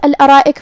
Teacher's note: یہاں را پہ زبر ہے تو ہمیں را کو تفخیم سے ادا کرنا ہے، مطلب بھاری آواز میں، جو کہ اس کے بعد مد الف ہے اور مد الف اپنے پیچھے والے حرف کا حکم لیتا ہے تفخیم میں اور ترقیق میں، تو ہم را کو اور مد الف کو دونوں کو بھاری آواز میں ادا کریں گے.